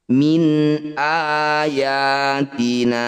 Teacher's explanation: bunyi nun sukun, baca dengan jelas, tidak usah didengungkan atau ditahan. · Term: izhar halqi